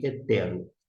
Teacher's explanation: nós temos uma aspiração áspera. E por conta disto, eu agora que atentei, prestei atenção melhor, a gente vai ter que pronunciar como ré.